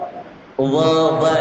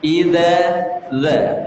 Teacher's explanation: zal itu mengeluarkan lidah yang ujung